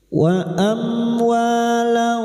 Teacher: Samarkan bunyi fathah tanwin dan siap membunyikan huruf fa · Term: ikfa hakiki